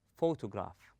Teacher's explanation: We stress on the first syllable, then we go easy. · We stress on pho. We place a strength or force on the first syllable, and we go easy on the rest of the word.